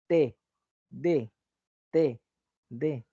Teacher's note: tus dientes tratan de juntarse y tu lengua está en medio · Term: dentales